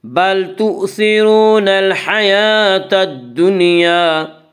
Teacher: بل تؤثرون الحیاة الدنیا، وا مدہ، وا مدہ وہ جو ساکن ہو اور اس سے پہلے پیش ہو، وا مدہ کو ایک الف کے برابر کھینچ کر پڑھیں گے۔